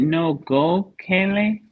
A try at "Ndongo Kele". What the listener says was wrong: Ndongo Kele. You have a nasal twice here.